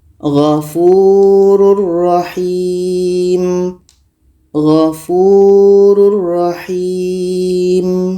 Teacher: Maka tanwin ini kita masukkan ke ro dan tidak boleh dengung. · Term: idgham bila gunnah